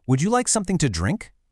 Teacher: Did you hear how my voice went up a little at the end? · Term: upward tone